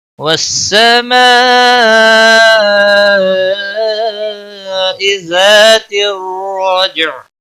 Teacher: عین وقف کی صورت میں ساکن ہوگا. وقف بالاسکان ہوگا